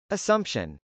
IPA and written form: əsˈʌmpʃən (assumption)